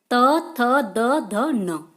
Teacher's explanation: जो शब्द दांतों से बोले जाते हैं उन्हें हम दंत व्यंजन बोलते हैं,